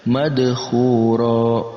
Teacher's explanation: Kemudian ada juga qalqalah, huruf qalqalah dal berharokat sukun, maka kita pantulkan juga